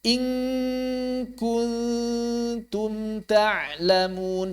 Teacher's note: Jadi kalau ketemu kaf, eng saja langsung eng.